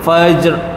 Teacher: mati dekat jim ada bunyi qalqalah sikit ya, fajr. Ra ada bunyi sedikit.